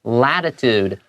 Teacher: t的聲音沒有那麼明顯 有點像 d 一樣的感覺